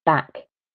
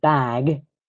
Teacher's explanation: the final sound, the k or the g, that will impact how long the vowel sounds.